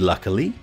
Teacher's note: Notice that the final Y in luckily is a shortened E.